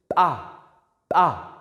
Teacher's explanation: So there's aspiration as compared to pa, pa. So when you say pa, you are not breathing out.